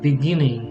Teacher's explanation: they kind of drop the G in the NG ending.